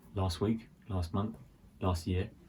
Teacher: So for this one, it's similar to last week, with the last week, last month, last year, last year. So that T sound again is very soft. It can almost sound like it doesn't exist.